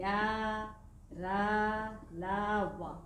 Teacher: जिन वर्णों के उच्चारण में हमारे मुख से कम वायु निकलती है वे अल्प प्राण व्यंजन या वर्ण कहलाते हैं।